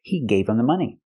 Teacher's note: We hear the pronunciation, not him, but gave him. The H in him is silent because the word's not stressed.